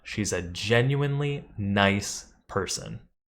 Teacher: adding space around the adjective nice to emphasize how strongly you believe that your boss is a nice person